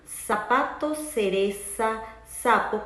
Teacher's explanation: nosotros los latinos decimos zapatos cereza sapo con el sonido de ese diferenciandonos así de los españoles